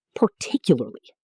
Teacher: The stress lands on tick. Everything else is quick and light.